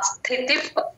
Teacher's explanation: ప ముందు వచ్చే విసర్గని యూజువల్ గా ఎఫ్ సౌండ్ లో చెప్తాం